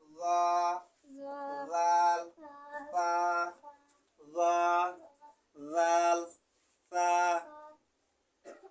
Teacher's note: জিহ্বার আগা সামনের উপরের দুই দাঁতের আগার সঙ্গে লাগাইয়া 13 নম্বর মাখরাজ উচ্চারিত হয়